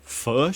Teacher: the short I sound is the most different between the New Zealander and the Australian accents because yours sounds like our schwa